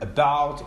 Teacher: it is actually articulated with the tongue in a more or less central position between the extremes of high and low and also between the extremes front and back so that's why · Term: center vowel